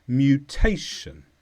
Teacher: this is a noun the stress is on tay